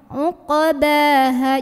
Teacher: di sini ainnya sampai tenggorokan dulu ya, tengah tenggorokan. Uqbaha, jadi jangan dibaca uqbaha, tapi uqbaha.